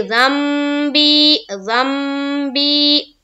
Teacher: دیکھیں یہاں پر نون ساکن ہے، اس کے بعد با ہے۔ نون ساکن کے بعد اگر حرف با آتی ہے تو اس نون کو جو نون ساکن ہے اسے میم سے بدل کر ہم لوگ پڑھیں گے۔ یہ ایک قاعدہ ہے جسے ہم اقلاب کہتے ہیں۔